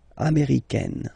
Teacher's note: it's really open, this A-I